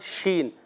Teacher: شین منہ میں آواز پھیل جاتی ہے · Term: تفشی